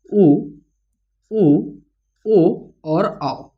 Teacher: दूसरा होता है वृत्त मुखी। तो जिन स्वरों के उच्चारण में हमारा जो ऊंठ है वो वृत्त मुखी या फिर गोलाकार होता है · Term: वृत्त मुखी स्वर